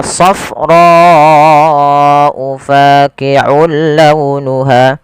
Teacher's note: panjangkan huruf ro sepanjang empat harakat karena di sini ada bacaan yang kita namakan dengan mad wajib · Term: mad wajib muttasil